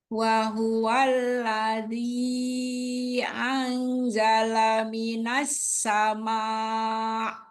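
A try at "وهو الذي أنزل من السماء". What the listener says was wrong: Belum lulus. Ini kan dengung 3 harokat. Tadi belum. Annya. Tapi nanti PR-nya adalah huruf zai ya. Zai ini nggak keluar.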